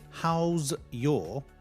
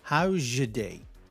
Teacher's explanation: The z and the y assimilate, they merge, they blend together and create a j sound. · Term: assimilation